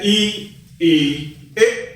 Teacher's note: जिन स्वरों के उच्चारण में जीभ का आगे वाला अर्थात अग्रभाग काम करता है उसे अग्र स्वर कहते हैं। जैसे ई, ए, ये क्या है हमारे अग्र स्वर।